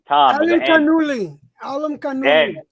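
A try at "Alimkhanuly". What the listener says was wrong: N, not an M, an N, and then Uli at the end of it.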